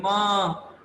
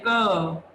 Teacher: म के साथ हल्की सी अ की आवाज आती है।